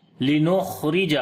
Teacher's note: खा को मोटा पढ़ेंगे और सिफ्ते हम्स भी करेंगे